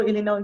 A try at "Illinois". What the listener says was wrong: You know, in we don't pronounce the S on that state in English, Illinois. No se pronuncia la S al final, Illinois.